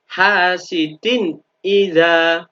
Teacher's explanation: Maka maka nun sukun atau tanwinnya, dalam hal ini kasrotennya, harus dibaca jelas. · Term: bacaan idhar